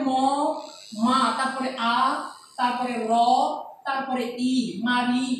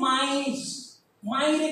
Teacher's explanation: মাইরে খেয়াল করো, ইটা কিন্তু আগে চলে আসছে, রটা পরে চলে গেছে, অর্থাৎ পরের ই আগে চলে আসছে। মাই শব্দে ই ছিল পরে, কিন্তু মাইর শব্দে ই চলে আসছে আগে।